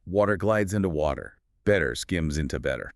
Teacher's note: the vocal cords remain active and the tip of the tongue merely flicks against the roof of the mouth for a fraction of a millisecond. It essentially becomes a soft D sound.